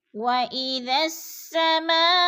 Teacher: ما پہ جو ہے مد متصل ہے، 4 الفی مد ہے